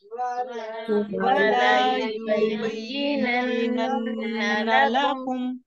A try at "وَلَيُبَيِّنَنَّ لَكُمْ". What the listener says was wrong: वला लाम की जबर को आपने बढ़ाना नहीं है, 2 हरकत तक जल्दी पढ़ना है, इससे आपका मानी बदल जाएगा. वَلَيُبَيِّنَنَّ لَكُمْ